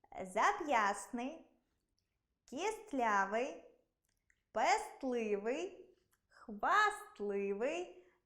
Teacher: У цих словах-винятках звук «т» у вимові зникає, але на письмі зберігається.